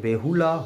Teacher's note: হ শ্রুতির ক্ষেত্রে বলা হয় বিপুলা, তা থেকে বিউলা, তা থেকে বেহুলা, হয়ের আগমন ঘটছে